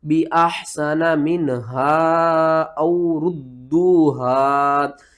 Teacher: گے، یہ دیکھیں ہا کے اوپر کیا ہے، چھوٹی مد ہے، اس کو ہم نے 3 الف کے برابر کھینچنا ہے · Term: مد منفصل